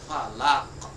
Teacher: huruf qaf salah satu dari dia adalah huruf isti'la, terangkatnya pangkal lidah, dan dia adalah qalqalah kubra